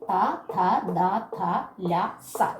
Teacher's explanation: ദന്തം എന്ന് പറഞ്ഞാൽ പല്ലെന്നുള്ള അർത്ഥം ദന്തത്തിന്റെ സഹായത്തോട് കൂടി ഉച്ചരിക്കുന്നവയാണ് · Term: ദന്ത്യാക്ഷരങ്ങൾ